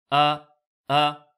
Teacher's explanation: Hamza qata'. La hamza, c'est tout simplement a, a. Donc on sent bien donc les cordes vocales.